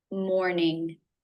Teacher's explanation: R consonant sound and the O as a no diphthong, together again for the M. Morning, tongue up in the front for the N, and then up further back for the NG